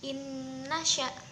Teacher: nun sukun bertemu nun maka dibaca dengung terlebih dahulu